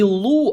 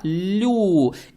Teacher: Далее стоит буква лям с даммой. Здесь дамма приобретает оттенок ю, так как буква лям она мягкая.